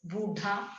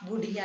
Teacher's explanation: बूढ़ा में बड़े ऊ की मात्रा, इसको हमने बुढ़िया में छोटा कर दिया।